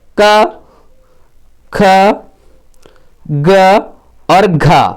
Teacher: क, ख, ग और घ ये वर्ण जो है आपके कंठ से बोले जाते हैं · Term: क वर्ग